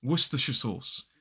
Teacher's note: there is the main stress on the second word of sauce and a minor stress, a lesser stress, on the first syllable of Worcestershire. So it becomes Worcestershire sauce.